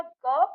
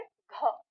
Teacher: फिर ग की तुलना में घ में ज्यादा हवा निकलती है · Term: महाप्राण